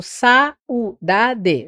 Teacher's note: Eu tenho aí um ditongo decrescente. A é vogal e U é semivogal.